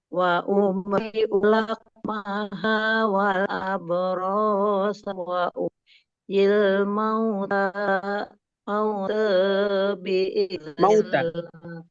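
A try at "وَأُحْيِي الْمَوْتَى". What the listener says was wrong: Masih fathah Ustazah. Wa uhyil mauta biiznillah.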